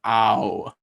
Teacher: you're closing and rounding as you go from an ah which is very open to oh which is more closed more rounding